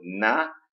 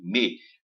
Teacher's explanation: Você vê que o N, né? A língua bate lá no céu da boca e o M, ele sai da compressão dos lábios.